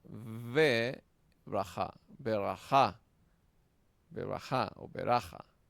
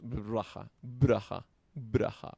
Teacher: esta sheva se vocaliza porque abre la sílaba, abre la palabra. Ver raja, no decimos braja, braja. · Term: sheva vocal